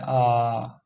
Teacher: विवृत स्वर यानी जिसमें मुंह पूरा का पूरा खुलता है।